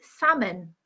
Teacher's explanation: the correct pronunciation is salmon with a silent L